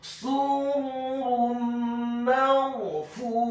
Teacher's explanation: Dalam hal ini adalah huruf mim yang fathah, maka hukum bacaannya adalah memasukkan dengan dengung idgham bil gunnah